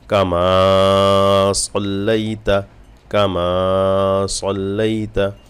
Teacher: কামা মিমে টান হবে এক লিফ টান